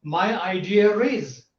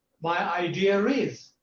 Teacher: When the word idea is followed by a vowel sound, they insert a r sound.